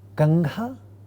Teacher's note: If you look at the 3rd column, you see in the first word, Kangha, the nasal is a velar nasal ng, because the consonant that follows the velar nasal is a velar consonant